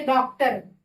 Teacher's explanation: मेरा जीहवा जो है वो पीछे की तरफ जा रहा है डॉक्टर तो ये जो होता है पश्च स्वर में आता है।